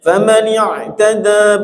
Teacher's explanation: Ain tengah tenggorokan, alif tenggorokan bawah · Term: Makhraj ainnya